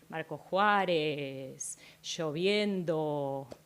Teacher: en Marcos Juárez vemos o resulta más notorio el alargamiento del final de palabras